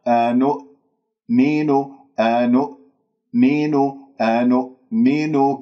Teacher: وهذا خطأ، لا تقلقل الهمزة، أنؤمن خطأ، لا تجعل همزتين، أنؤمن، لابد من قفل الأوتار الصوتية في الهمزة قفلا محكما